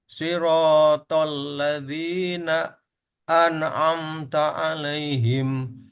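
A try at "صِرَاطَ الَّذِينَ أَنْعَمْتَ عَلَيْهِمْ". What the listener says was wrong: Di sini tadi terpantul. Siratal ladzina an'am. Jangan sampai terpantul. Na'an'amta. Siratal ladzina an'amta alaihim. Nah, boleh ditahan di sini satu harokat. Nun juga punya sifat bainiyah. An'amta, an'amta.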